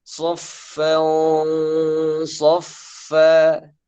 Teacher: Kalau misal setelahnya huruf-huruf isti'la, misal contoh soffan soffa. Jadi sod tanwin bertemu dengan sod, maka harus dibaca tebal. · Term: ikhfa